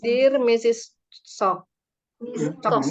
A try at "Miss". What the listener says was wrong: Ini bacanya Miss ya. Kalau akhirnya baru Mrs.